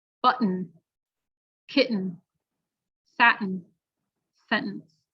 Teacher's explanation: the air gets stopped in your throat and then released through your nose, and that's what creates the difference in the sound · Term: glottal